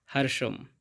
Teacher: এখানে মূর্ধন্য স্বয়ের উপরে রেপ থাকার কারণে অর্ধেক রয়ের মতো সাউন্ড আগে আসবে এবং শব্দের শেষে অনুস্বর থাকার কারণে অর্ধেক ময়ের মতো সাউন্ড আসবে।